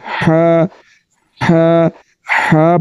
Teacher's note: تو اس کا مخرج حلق کے درمیان والا حصہ ہے تو اس کو حلق کے درمیان والے حصے سے نکالیں گے اور پڑھیں گے حا حا حا پڑھنا ہے ہا نہیں پڑھنا